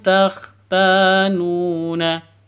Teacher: NU juga panjang dua ketuk karena ada wau sukun sebelumnya Dom lum anusakum nun mati bertemu dengan Fa